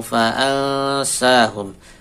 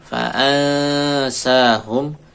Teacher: nun sukun ketemu sin ikhwa nunnya samarkan